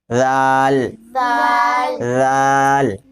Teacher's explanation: دال، دال کا مخرج جیسے سا کا مخرج نکالا نا، زبان کی نوک اور اوپر کے دانتوں کا کنارہ، اوپر کے دانتوں کے کنارہ، کنارہ، اس کو وہاں سے نکالو.